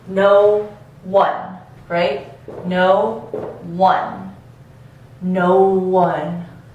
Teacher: see if you can hear the addition of this W sound